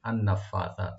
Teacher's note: নুন মুসাদ্দাদ দেখবেন এখানে ওয়াজিব গুন্না একালিপ পরিমাণ। আর ফা ওপেন করে একালিপ টানবেন।